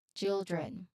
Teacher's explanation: It's a clean D to R transition. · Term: DR blend